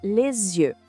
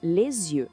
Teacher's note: A gente fala les yeux. O S da palavra le acaba se juntando com o início da outra palavra, criando esse som de Z. O nome disso é liaison.